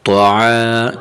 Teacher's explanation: طا زبر طا، عین الف زبر ع، طاع. یہاں حرف طا کو موٹا کریں گے اور عین کی آواز نکالیں گے. عین کی آواز گلے سے تھوڑا سا دبا کے عین.